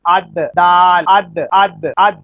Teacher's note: جب زبان کا کنارہ ثنایا اولیہ کی جڑوں سے ٹکراتا ہے تو لفظ دال ادا ہوتا ہے، یہ دال کا مخرج ہے۔